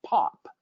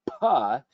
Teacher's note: when we say pop right that initial puh uh we close our lips build up sound open up our lips real quickly and we get that burst of air and we get that pop sound same thing with other sounds